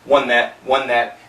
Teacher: the N is cancelling the th